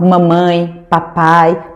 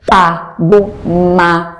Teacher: são pronunciados, são articulados com os meus dois lábios, o de cima e o de baixo. Quando eu faço a união do pá, do ma com o lábio superior e inferior, fica muito fácil do bebê, da criancinha ainda pequena, me imitar, me copiar, porque ele tem essa pista visual.